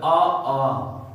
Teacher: आ और आ का उच्चारण स्थान कहां से होगा? कंठ से।